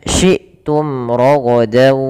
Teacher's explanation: ada hamzah yang sukun di sini, harus suaranya ditahan dan suaranya harus nafasnya juga tertahan karena dia sifatnya ada 2, sifat jahar dan sifat syiddah.